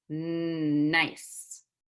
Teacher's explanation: N, which uses the tongue and tooth ridge. Air comes out the nose.